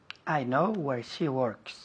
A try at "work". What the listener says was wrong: Works. Walk, andar. Work. Con la R un poco más fuerte. Work. Work.